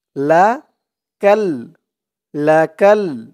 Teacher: কাফ দিয়ে এই লাম ধরবে, মাঝখানে এই আলিফটা বাদ যাবে।